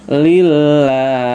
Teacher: Nah, ini baru dibaca lillah ya, karena lafadz lam jalalah diawali dengan harokat kasroh ya. maka dibaca tipis lamnya.